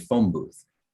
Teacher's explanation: You can say phone and you can say booth, but you can't say those two words together. If you put the two words together, you get phone booth. The N becomes an M. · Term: phonemic blending